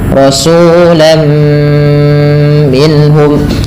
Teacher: karena ia bighunah disertai dengan ghunah maka perlu ada penahanannya.